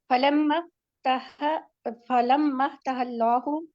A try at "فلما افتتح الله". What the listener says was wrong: فتح اللہ، double تا ہے نا یہ،